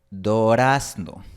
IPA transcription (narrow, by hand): do'ɾas.no